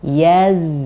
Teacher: Zal ketika dia sukun dia yang paling panjang, jadi harus kita panjangkan. Yaz. Dan hati-hati di ujung lafadz zal yang sukun jangan sampai mantul sedikit pun.